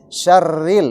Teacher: huruf ro kalau kasroh dia bunyinya tipis.